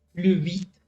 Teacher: Les S ne se prononcent pas.